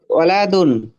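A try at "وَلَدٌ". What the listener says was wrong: ওয়ালাদুন। টান হবে না, হ্যাঁ, ওয়ালাদুন।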